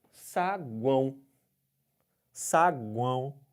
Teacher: um som sai pelo nariz se você tampa o nariz esse som fica abafado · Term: tritongo nasal